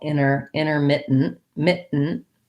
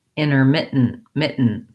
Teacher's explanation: So how I would do that is I go up to mit, close my tongue off for the T, mit, and then I go right into my N, mit, And so I might do a little light T here, or I might also stop this T. So basically, it's almost like we don't say many of these T's at all.